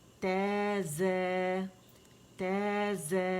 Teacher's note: تا باریکی سے ادا کریں گے، موٹا نہیں پڑھنا ہے